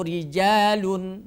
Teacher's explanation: ketika ro berharakat kasrah maka ro berubah sifatnya menjadi tarqik yaitu tipis